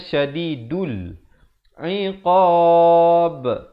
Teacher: diberikan pantulan kerana ba merupakan huruf qalqalah